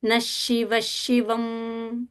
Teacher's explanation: That half visarga is going to sound like half sha.